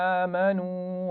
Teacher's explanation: آمنو، حمزہ پر کھڑا زبر ہے تو اس کو کھینچ کر پڑھیں گے